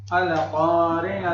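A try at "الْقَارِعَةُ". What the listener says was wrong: Nah, qalqalah tuh. Al-qari'atu. Iya, hati-hati pokoknya, bukan qalqalah itu.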